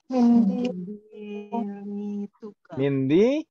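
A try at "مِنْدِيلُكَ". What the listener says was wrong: Mindiluka. Mindiluka. Jadi lamnya bukan kasroh tapi dhammah. Mindiluka. Tidak ada yang menjadikannya kasroh.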